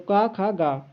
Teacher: का खा गा ये आपके किससे बोले जाते हैं, आपके कंठ से बोले जाते हैं